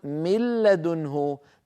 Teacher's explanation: فأكون قد حولت النون إلى لام ساكنة، النون الساكنة حولتها إلى لام ساكنة، وأدغمت اللام الساكنة في اللام المتحركة التي بعدها، فصار النطق بلام واحدة مشددة، بحيث يصيران حرفا واحدا مشددا من جنس الثاني. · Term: الإدغام